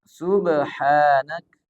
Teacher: ada huruf ba dibaca qalqalah. Nah, ini dibaca mantul. Tidak sekedar qalu subhanaka la, mesti dipantulkan.